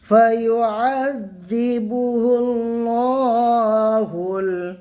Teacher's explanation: হালাম পেশ হুল, ফায়ুআযিবুহুল্লাহুল, লাম আল্লাহ কি হবে, পুর হবে, ঠিক আছে, মুখটা গোল করে পড়বো